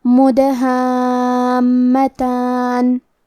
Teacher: کلمت مدہامتان میں حرف دال پہ جزم ہے لہذا ہمیں دال کو قلقلہ سے پڑھنا ہے اور قلقلہ کا معنی ہے حرف ساکن کو ہلانا، تو ہم حرف دال کو ہلاتے ہوئے یہ کلمہ کو پڑھیں گے